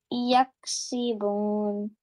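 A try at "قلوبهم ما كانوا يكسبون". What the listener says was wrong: Good job. You read it now.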